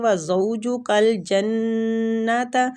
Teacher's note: نون پہ غنہ ہو رہا ہے، ٹھیک ہے، مشدد نون ہے